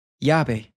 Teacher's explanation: Here's the word for key, and as you can see, we have this double L appearing at the start of the word. Whenever you have a double L in Spanish, it will take on a Y sound. Llave. Also, once again, notice how this V sounds like a soft B.